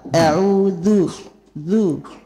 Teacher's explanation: كل حرف لها صفة خاص. ذال مجهرة ذا لا يجري فيها النفس. لولا الجهر لكان الذال ثاء.